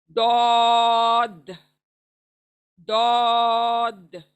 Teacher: इसकी मखरज है जबान का किनारा, हमारे जबान का किनारा ऊपर के दाढ़ों के मसूड़ों को टच होकर, उसको टच होगा, चाहे वो लेफ्ट हो चाहे वो राइट हो, कोई भी दाढ़ें हो ऊपर की, उनके मसूड़ों को टच होने से दौद दौद ये अदा होता है।